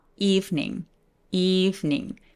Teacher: 자, good evening 할때 방금 제가 어떻게 발음했어요? good evening 이라고 하지 않고 good evening, evening 이라고 소리 냈죠? 두 번째 이가 사라지는 현상이 생겨요